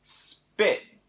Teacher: the P is no longer at the beginning so it's no longer aspirated and the difference there is between huh and but spit spit · if you put an S at the beginning of the word, so we have the word spit, the P is no longer at the beginning, so it's no longer aspirated